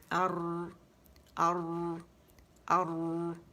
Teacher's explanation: موٹی راہ ہے, زبر لگائیں گے حمزہ پہ اور را کو ساکن کریں گے